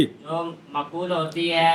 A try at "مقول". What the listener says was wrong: مقول معقول نہیں. میم زبر ما کف پیشوا کو مکو.